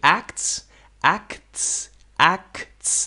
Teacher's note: This is different than ACT. Act. Axe. Different. Act. Axe. Acts. There's a little T.